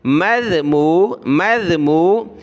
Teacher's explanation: یہ ذال ہے، اس پر زبان نکالیں گے